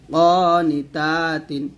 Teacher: ক টান দিবেন, তা টান দিবেন, নি টান দিবেন না